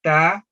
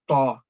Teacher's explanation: یہ ایک ہلکی آواز میں ادا ہونے والا حرف ہے، اور اس کے بالمقابل جو دوسرا اس سے ملتی جلتی آواز والا حرف ہے وہ ہے تو، بھاری آواز والا حرف. تو اس میں فرق ہم نے یہ کرنا ہے کہ یہ باریک آواز ہلکی تا، اور یہ تو تا اور تو.